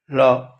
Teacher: நாவின் 2 பக்கங்களும் தடித்து மேல் அன்னத்தின் நடுப்பகுதியை தொடுவதால் தோன்றுவது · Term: பொது லகரம்